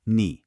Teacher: Feel that dip? That's the third falling rising tone.